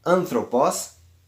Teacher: o acento ele vai cair na antepenúltima sílaba da palavra. Nesse caso, anthropos vai ocorrer na an, que é a sílaba tônica neste caso. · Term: acento agudo